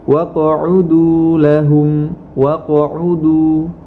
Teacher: Sebagaimana contoh dalam kata waqa'udu, huruf qaf memiliki sifat qalqalah, maka kita pantulkan tanpa berhenti membacanya. Waqa'udu, bukan waqa'udu itu berhenti, tapi kita langsung memantulkannya dan melanjutkan bacaan kita.